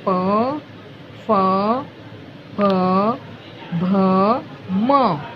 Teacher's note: जो उच्चारण होठों से होता है उसको बोलते हैं पवर्ग।